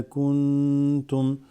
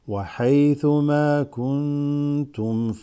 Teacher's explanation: Because the noon has a sukoon followed by ta. That's ikhfa, where you elongate it just slightly.